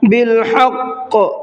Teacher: قاف کو منہ بھر کے پڑھنا ہے اور قاف کو ڈبل پڑھنا ہے · حا کو حلق سے نکالنا ہے